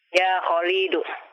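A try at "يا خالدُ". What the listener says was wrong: Lamnya jangan dipanjangkan. Ya Khalidu.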